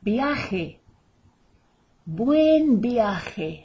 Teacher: the J is the only guttural sound really in Spanish. It comes right from the throat, as though you were going to cough up some phlegm.